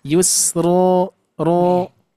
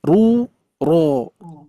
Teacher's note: Wa nuyassiruka lil yusra. Ru dan ro tebal ya. Terkecuali nanti ri tipis.